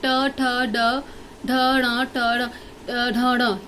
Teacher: ये आपकी मूर्धा से बोले जाते हैं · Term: टवर्ग